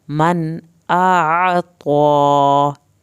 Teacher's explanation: अलिफ और आइन को अलग-अलग पढ़ना है। अलिफ की अदायगी होगी और आइन को हल्क से पढ़ना है।